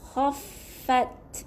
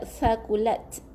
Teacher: Ada th, ada angin yang keluar. Ta yang mati, ada angin yang keluar. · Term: hamas